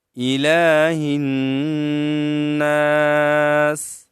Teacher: एक अलिफ की मदार हम खींचें ऊंचा करेंगे लंबा करेंगे और हा को नून के साथ मिलाएंगे नून में फिर क्या है गुन्ना है और सीन को वक की वजह से साकिन करेंगे इलाही नास · लाम पर क्या है कड़ी जबर है तो हम इसको एक अलिफ की मदार हम खींचें ऊंचा करेंगे लंबा करेंगे